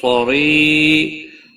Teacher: صاد حروف مستعلیہ میں سے ہے، پر پڑھا جائے گا۔ ری، یا مدہ ہے، ایک الف کے برابر کھینچ کر پڑھیں گے۔